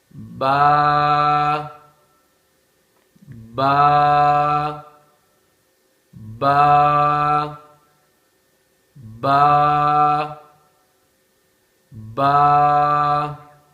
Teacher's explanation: با کے اندر تری والا جو حصہ ہے وہ زیادہ لگتا ہے